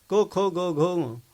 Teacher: क ख ग घ कंठामधून येणार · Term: कंठव्य